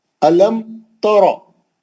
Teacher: अलम तरो, मीम साकिन का इजहार शफी हर्फ ता. अलम तरो, मीम को लंबा नहीं करेंगे, गुन्ना नहीं करेंगे. रा को मोटा पढ़ेंगे, पहली कंडीशन है.